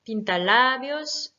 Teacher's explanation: Pintalabios, pareil, ici on a un mot qui se finit par un S, donc c'est la première règle qui s'applique, donc ça veut dire que c'est l'avant-dernière syllabe accentuée